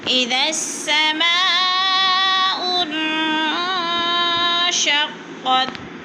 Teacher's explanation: ان پہ اخفا ہو رہا ہے، ناک میں آواز لے جائیں